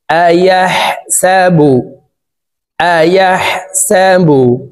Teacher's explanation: হার উচ্চারণ হলকের মধ্যখান থেকে করব কারণ হার মখরাজ হলকের মধ্যখান থেকে হবে তো হার উপরে জজম